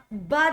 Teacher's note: ओष्ठ अल्पप्राण और घोष वर्ण का उदाहरण